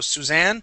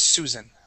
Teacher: when you have the ending with Anne, okay, we put the emphasis on Anne